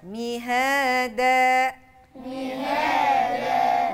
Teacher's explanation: والمد ما يطولش زيادة عن اللازم يبقى كأنه مد طبيعي